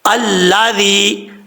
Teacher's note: ذال میں سیٹی نہیں آئے گی، بغیر سیٹی کے پڑھا جائے گا، یا مدہ ہے، ایک الف کی مقدار لمبا کریں گے۔